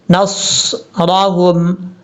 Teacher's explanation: نون کو صاد سے ملائیں گے اور صاد کو پر پڑھیں گے